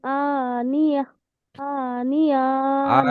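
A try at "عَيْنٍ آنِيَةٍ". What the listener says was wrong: আনিয়া নয়, আইন, আইন ইয়া যাবার আই, তুসকা মিন, আই নিন, আনিয়া। তুসকা মিন, গন্না হবে না, হবে না? কেন হবে? নুন সাকিনের পরে কি এসেছে?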